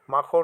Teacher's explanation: আরতি শব্দে আ মাখন শব্দে মা শাসাঘাত পড়েছে